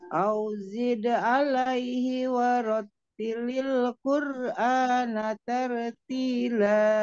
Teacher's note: alaihi hinya jadi ke ayun ya, pendek aja satu harakat.